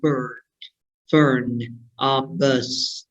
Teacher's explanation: So the sound is the mid-central vowel. Nó là một cái nguyên âm về cao độ, nó là ở cái tầm trung, đúng không ạ?